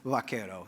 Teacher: that bilabial v of vaquero sounds a little bit more like a B to the Americans